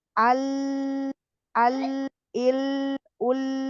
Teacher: dia ada suara lari ke samping berbelok namanya inhiraf. Itu sifat inhiraf itu hanya huruf lam dan ra.